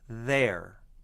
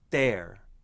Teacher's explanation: With a low, relaxed tongue, there. With a lifted tongue blocking the airflow, there. It sounds like a D consonant, there, because my tongue is blocking the airflow. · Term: TH consonant